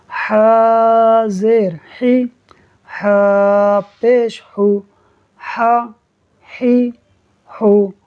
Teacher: ہا آپ نے حلق کے درمیان والے حصے سے نکالنا ہے باریک کرتے ہوئے۔